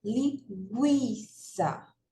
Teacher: veja que eu pronuncio o i com mais força do que o u então o u é sem vogal e o i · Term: ditongo crescente